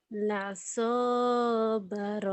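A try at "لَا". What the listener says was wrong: La-nya panjang. panjang. La-nya panjang kan ada alif la-nya.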